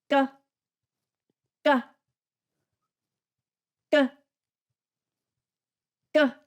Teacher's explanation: by itself a few times g g g g you can you can feel your throat forcing that sound and sort of stopping it and then forcing it out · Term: unaspirated k sound